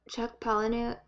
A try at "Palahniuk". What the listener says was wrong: I think that the H is silent. Palahniuk.